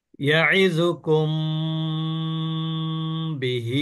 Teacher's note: মিম অক্ষরে সাকিন তার পরের অক্ষর যদি বা হয়, তাহলে এই মিমকে গুণনা করে পড়তে হবে। এটাকে বলে ইকফা গুণনা, মিম সাকিনের ইকফা গুণনা। · কুম বলে আমি কিন্তু এখানে স্টে করলাম, তারপরে বিহি বললাম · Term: মিম সাকিনের ইকফা গুন্না